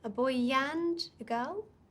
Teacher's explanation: we add a yes sound between them it's a soft sound yeah it's quite subtle but it makes a huge difference yeah